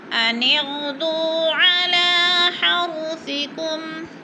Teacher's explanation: علی لام کے اوپر بھی کھڑی زبر ہے، تھوڑا سا کھینچ کر پڑھنا ہے۔ اور حرثکم، را کو ہم نے پر کر کے پڑھنا ہے کیونکہ را سے پہلے لفظ کے اوپر زبر ہے۔